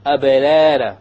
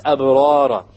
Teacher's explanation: Notice the alif was what? Heavy, because ra is heavy in this case